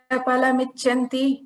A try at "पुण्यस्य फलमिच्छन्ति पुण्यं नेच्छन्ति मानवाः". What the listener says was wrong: So phalam icchanti, ichha, cha is mahaprana. Okay, so that is one thing that you improvise.